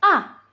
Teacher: nada keempat itu tandanya turun. Jadi seperti orang marah.